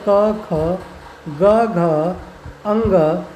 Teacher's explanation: पूरे क वर्ग का ही उच्चारण स्थान होता है कंठ, यानी इसके अंतर्गत 5 आते हैं क, ख, ग, घ, अंग।